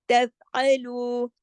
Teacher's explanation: تف باریک لیٹر ہے، یہاں دھیان رکھیے، تفعلوا، عین کو حلق سے